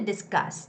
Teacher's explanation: Discuss has the second syllable stress.